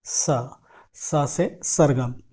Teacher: हम जीभ को दांतों के पास, जो टूथ रिज होता है हमारा, वहाँ पर ले जाके टच करते हैं और फिर उसके बाद वहाँ से एयर फ्लो होता है। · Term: दंत्य स